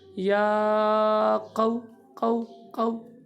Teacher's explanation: اس کو بعد کرتے ہیں یا قو، یہ قو لمبا نہیں کرنا، یا قو، قاف کی آواز نکالنی ہے، زبان کی جڑ اور تالو کا نرم حصہ، اس طرح کی آواز آئے گی، یا قو، قو، قو۔